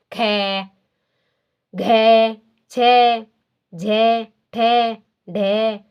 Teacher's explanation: जिन वर्णों के उच्चारण में श्वास वायु अधिक मात्रा में मुख विवर से यानी हमारे मुख से बाहर निकलती है उन्हें महाप्राण ध्वनियां कहते हैं।